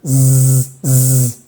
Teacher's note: Si te pones las manos en la garganta, vas a sentir que toda esta parte de tu garganta, de tu cuello, vibra.